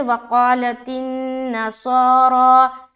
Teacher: قاف کو موٹا رکھتے ہوئے کھینچیں گے، الف مدہ کریں گے